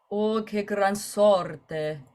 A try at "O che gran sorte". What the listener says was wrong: Good. Can you give me two G's here? O che gran sorte. It's phrasal doubling.